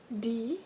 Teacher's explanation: the tip of the tongue is just behind your teeth and is suddenly released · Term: plosive d